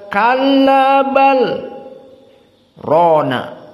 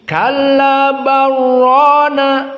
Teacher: bal Rona tapi Kalla barrona qiraah hafas dibaca Bagaimana bal Rona qiraah alqisai dengan qiraah Wars diidgamkan lam dengan Ro · Qiraah Al-Kisai dengan qiraah Wars diidghamkan lam dengan ra. Jadi kallabarrona, idghamnya cukup 2 harokat, barrona.